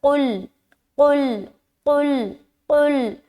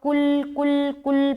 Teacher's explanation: بعض اوقات لوگ کل کل کل پڑھتے ہیں، تو یہ جو قاف ہے نا اس کو بالکل حلق سے ادا کرنا ہے